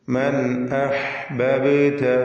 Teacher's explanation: മൻ അഹ്ബബ്ത, ഈ പദത്തിൽ ബാഇന് സുക്കൂൻ വരുന്നുണ്ട്. ഖൽഖല സുഗ്റ നൽകി ബാഇന്റെ സുക്കൂനിനെ ഹറക്കത്ത് പോലെ വ്യക്തമാക്കി ചലിപ്പിച്ച് ഉച്ചരിക്കുക.